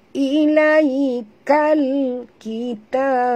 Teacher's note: Ilaikal kitab, ilaiya sifatnya lin lembut, kal alif lam qamariyah, bunyikan lam yang mati tanpa lantunan. Jadi kita baca tongkatkan lidah ke langit. Ilaikal kita, ta mak tabi'i dua harakat.